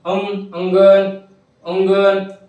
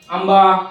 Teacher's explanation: नाकातून उच्चारल्यासारखं वाटतं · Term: अनुस्वार